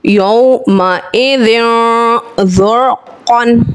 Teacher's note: इक़्फ़े का कायदा है एक अलिफ गुन्ना करके पढ़ेंगे।